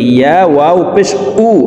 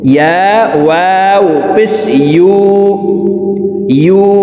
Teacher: ইয়ার উচ্চারণ জিহ্বার মধ্যখান থেকে পড়তে হবে। আমরা অনেকে ইয়ার উচ্চারণ হামজার উচ্চারণ করে থাকি, ইয়া ওয়াও পেশ উ এইভাবে পড়ে থাকি।